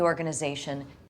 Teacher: the accent is in the fourth syllable, corresponding to ze.